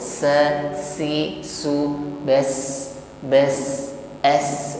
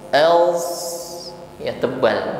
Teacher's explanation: sin sukun yang sifatnya tidak isti'la tapi istifal, lidahnya tetap di bawah.